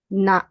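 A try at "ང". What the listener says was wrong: No. Ng. Ng. No, not n. Ng. Nga. Now, if you say na, it's this one. It's the third row.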